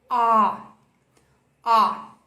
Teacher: Aqui no IPA, toda vez que essa letra A redonda aparecer, ela vai te pedir para fazer um som O, que é uma mistura do nosso A do português com o nosso O do português, esse nosso O de avó. Então é como se você falasse a letra O, só que com a boca um pouco mais aberta, mais exagerada.